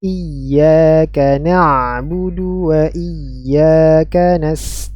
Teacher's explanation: ya huruf di sini bertasydid Nam huruf ya di sini bertasdid Hamzah kasrah bertemu dengan Ya bertasydid ini adalah tempatnya nabr